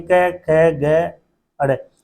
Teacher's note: यानी कै वर्ग में जितने भी वर्ण आते हैं, कै ख ग अड़, इनका उच्चारण कहां से होता है, कंठ से होता है